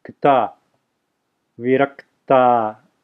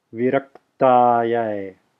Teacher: So again, there's a pause between the ka and the ta. Viraktaya. Which is really an extending of the ka.